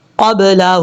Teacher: قاف کے بعد جو با ہے اس با میں باؤنس آئے گا کیونکہ یہ حروف قلقلہ میں سے ہے